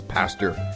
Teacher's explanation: addition of an R. So pasta becomes pastor